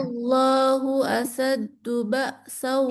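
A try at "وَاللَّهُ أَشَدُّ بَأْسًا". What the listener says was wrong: Shin. Shin. Asyad, jangan asad.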